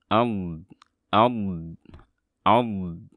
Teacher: Alirkan suara dotnya karena dia bersifat rokhawah, dan dari situ kita harus mempraktekkan sifat istitalah, yaitu membuat suaranya memanjang. Sebetulnya istitalah itu yang memanjang pergerakan lidah dan diketahui dari jenis suaranya.